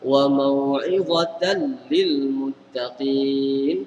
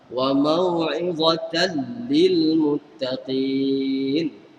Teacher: Lam tu pun diletak sabdu sebab menunjukkan dia ada situ hukum idgham bila gunnah. Maknanya tanwin di atas ta tu masuk ke dalam lam.